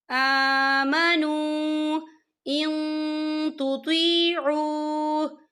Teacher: یہاں پہ واو مدہ ہو رہا ہے، واو ساکن ہے، واو ساکن سے پہلے پیش ہے اور اس پہ چھوٹی سی مد بھی ہے، تو ہم اسے 4 حرکت کے برابر کھینچ کے پڑھیں گے